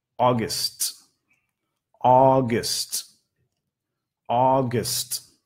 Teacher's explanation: Notan el gst al final. Es más corto, ¿no? Gst, menos no enfatizado.